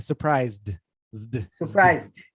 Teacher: Surprised with a D, but it's a ZD.